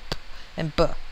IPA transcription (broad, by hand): p and b